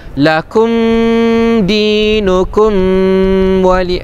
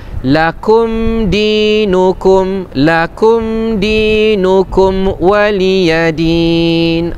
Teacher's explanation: jadi cara bacaannya jelas saja, tidak didengungkan dengan 2 harakat. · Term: izhar syafawi